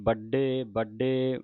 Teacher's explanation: ਵੱਡੇ ਵੱਡੇ ਅਧਕ ਲਾ ਕੇ ਉਚਾਰਨ ਹੋਣਗੇ ਦੋਨੇ ਬੜੇ ਵੱਡੇ ਨਹੀ ਕਹਿ ਦੇਣਾ ਅਦਕ ਲਾ ਕੇ ਕਸ ਕੇ ਬੋਲਣੇ ਨੇ